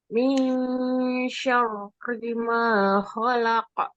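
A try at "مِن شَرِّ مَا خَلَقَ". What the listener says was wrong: Dengungannya disempurnakan. Min syarri ma.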